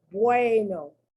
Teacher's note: The E is strong, the U is weak. The U is pronounced like a W